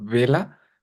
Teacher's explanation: la pronunciación obviamente es con los labios pegados, es vela, mientras que barco es distinto.